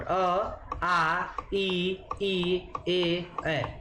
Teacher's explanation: अवृत्ताकार, जिन स्वरों के उच्चारण में ओष्ठ क्या होते हैं? वृत्ताकार न होकर फैले हुए होते हैं